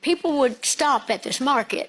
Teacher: I was told to listen for a shh sound on the S's